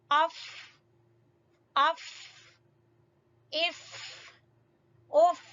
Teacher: فا ہونٹوں کی گیلی جگہ سے، گیلی جگہ پر سامنے والے 2 دانت گیلی جگہ پر ٹکیں گے تو ادا ہوگا فا